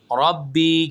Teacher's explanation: را موٹا پڑھا جائے گا اور با کو ہم ایک الف کے برابر کھینچ کر پڑھیں گے کیونکہ یا ساکن آ رہا ہے، زیر سے یا ساکن سے پہلے زیر آ جائے تو ہم وہاں پر ایک الف کے برابر کھینچتے ہیں، یا مدہ بنتا ہے۔